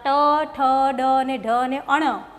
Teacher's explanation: તો આ ટ, ઠ, ડ અને ઢ અને અણ, ટ કરો એટલે જીભ વળે છે, તો આ મૂર્ધન્ય સ્થાનના વર્ણો છે, કંઠ સ્થાનના છે નહીં